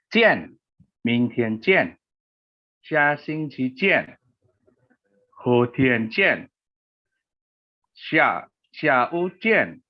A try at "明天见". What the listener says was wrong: Oke, ciennya sudah benar, Pak. Cuman yang depan nadanya masih kurang stabil ya. 明天见. Oke, 下星期见. Oke, 后天见. Nah, 天 pakai th ya. 后天见. 再来 terakhir, 下午见.